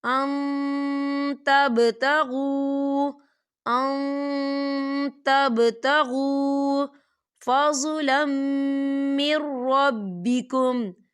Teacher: دیکھیں ان، یہاں نون ساکن ہے اور نون ساکن کے بعد تا آ رہا ہے اور تا جو ہے اکفا کا ورڈ ہے تو یہاں پر اکفا کریں گے. نون ساکن کی آواز کو ناک میں چھپائیں گے